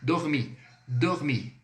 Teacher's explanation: O R é bem rasgado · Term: R bem rasgado